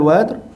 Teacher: ra dekat hujung ayat tu adalah ra tebal